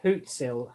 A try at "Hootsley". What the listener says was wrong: Hootsley. Yeah, you said Hootsel.